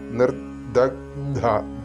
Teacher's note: മന്ത്രാർത്ഥം മാറിപ്പോകില്ല മഹാപാശുപതാസ്ത്രാഗ്നി പിന്നെ നിർദഗ്ധം ഇവിടെ നിർദ എന്നുള്ള ദ അലപപ്രാണനാണ് അതുകഴിഞ്ഞിട്ട് ഗ് പിന്നെ അല്പപ്രാണൻ പ്ലസ് മഹാപ്രാണൻ